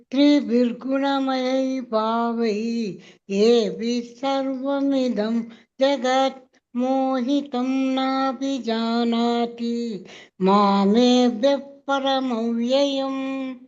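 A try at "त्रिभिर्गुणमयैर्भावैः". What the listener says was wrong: ನಿಸರ್ಗ ಬಂದಿಲ್ಲ. ತ್ರಿಭಿರ್ ಗುಣಮಯೈ ಭಾವೈಹಿ ಹೇಳ್ಬೇಕು. ಬಿಡಿಸಿದೀವಲ್ಲ, ವೈಹಿ ಹೇಳಿ.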